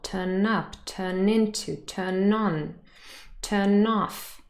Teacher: So n really joins the particle.